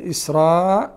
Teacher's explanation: إسراء، الألف مد هنا للراء مد مشبع، واسمع بالمد الواجبي واسمع بالمد المتصلي، وهو مشبع. الإمام ورش يعطيه ست حركات، والإمام قالون أربع حركات